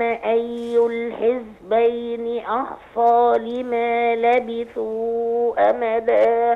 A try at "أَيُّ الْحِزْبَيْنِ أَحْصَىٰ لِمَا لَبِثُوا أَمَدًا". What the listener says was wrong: يا ريت حضرتك تحرقيق الهمزة في نسبة الأحصى. أحصى أحصى.